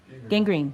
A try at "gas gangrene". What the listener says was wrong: Gas, gangrene. You keep saying gas green, I just wanted to make sure.